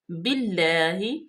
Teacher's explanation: با کے نیچے زیر ہے، اس کو ڈائریکٹ لام میں ملائیں گے